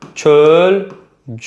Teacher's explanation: İkinci hecadakı açıq sait qapalıya keçir.